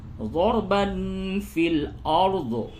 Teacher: را کو پر کریں گے، را ساکن سے قبل زبر ہے، پر ہوگا ، اور تنوین کے بعد فا ہے، یہاں پہ اخفا ہوگا،